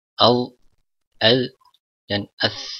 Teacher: Kita ingat bahwa makhraj ketiga huruf ini sama, ujung lidah dengan ujung gigi seri atas, ya. Ujung lidah menempel ke ujung gigi seri atas, jadi sedikit keluar ujung lidahnya. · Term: al-huruf al-lisawiyah